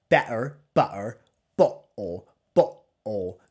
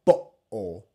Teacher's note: We're applying what's called a glottal stop. We're closing our glottis.